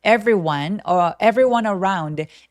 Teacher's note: 자, everyone 발음할 때 everyone 안 하고 every 하면서 중간에 e가 없어진 것처럼 발음하셔도 좋아요. everyone, everyone around everyone 하면서 연결하셔도 좋겠네요.